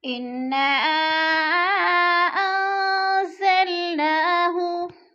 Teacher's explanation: انا کی نون مشدد ہے، انا کو سختی سے پڑھیں گے، جما کے اور تھوڑا سا غنہ کریں گے۔ انا پہ مد بھی ہے، مد منفصل، حروف مدہ کے بعد حمزہ دوسرے کلمے میں ہے تو مد منفصل ہو رہی ہے، یعنی 4 الفی مد ہے، 4 الف کے برابر کھینچ کر پڑھنا ہے۔